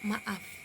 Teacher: Ketika glotis tertutup lalu dibuka, tiba-tiba udara keluar dan menciptakan hentakan kecil. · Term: bunyi glotal